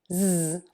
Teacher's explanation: a Z sound, which is an S sound with the voice box on and vibrating and moving.